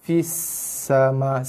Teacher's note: Fisa tu pergi pada sin. Jaga sifat desiran pada sin